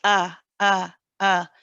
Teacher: with the hamza there is no squeezing in the throat when we say ah it's simply you just open your vocal